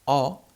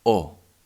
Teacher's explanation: one is the open sound which sounds o and one which is close that sounds o